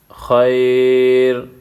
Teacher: خی را دو پیش رن خیر وقف کی صورت میں خیر یا ساکن پہلے زبر ہے یا مدہ ہے اس کو نرم پڑھا جائے گا